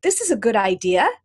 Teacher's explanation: uptalk is a rising inflection. It sounds like I'm asking a question. I'm really making a statement.